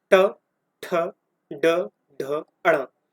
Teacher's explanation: इनको जब आप बोलेंगे तो आपको ऑटोमेटिकली ये लगेगा आपकी जीभा फोल्ड होके अंदर की तरफ जा रही है, ठीक है। तो जब आपको ये फील होने लगे कि आपकी जीभा फोल्ड होके गर्दन यानी कि कंठ की तरफ जा रही है, तो वहां पे हो जाएगा मूर्धन्य, जैसे ट।